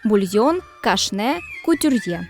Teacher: французького походження зазвичай мають наголос на останньому складі